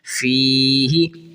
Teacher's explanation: فی ہی، فی ہی، ہا کو نہیں کھینچنا، یاد رکھیں اکثر بچے پڑھتے ہیں فی ہی، ہا کو کھینچنا نہیں ہے، بس ہلکا سا، بس زیر جتنا کھینچنا ہے